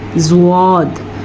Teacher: इसको ज़्वाद पढ़ें और ज़्वाद को मोटा भी पढ़ें, ज़ाद के बजाय ज़्वाद।